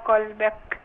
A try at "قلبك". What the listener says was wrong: هي كلمة قلبك ولا قلبك؟ الباء مكسورة.